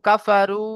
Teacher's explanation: ওয়াও সাকিনের ডান দিকে পেশ এসেছে, একে ওয়াও মাদ্দা বলা হয়। ওয়াও মাদ্দাকে একালি পরিমাণ টান দিয়ে পড়তে হয়।